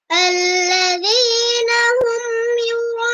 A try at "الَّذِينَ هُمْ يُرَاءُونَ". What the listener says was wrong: আল্লাযী জেরের উচ্চারণ সবসময় নিচে যাবে। জেরের উচ্চারণ সবসময় নিচের দিকে নিবা। আল্লাযী আর জবরের উচ্চারণ সবসময় উপরের দিকে। আল্লাযীনা না আল্লাযীনা হুম আর পেশের উচ্চারণগুলো সামনের দিকে নিয়ে আসবা। হুম, হুম ঠোঁটগুলো গোল করে দিবা। আল্লাযীনা হুম আল্লাযীনা হুম হ্যাঁ, ইয়ার মধ্যে তোমার পেশ তুমি এটা গোল করো নাই।